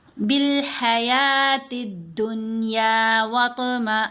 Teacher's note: حمزہ کو نون سے ملاتے ہوئے غنہ بھی کرنا ہے، پھر نون کو 2 حرکات کی مقدار لمبا بھی کیا